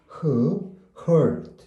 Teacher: 목구멍을 다 막지는 않고 거기서 흐 발음이 새 나오는 소리입니다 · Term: h 발음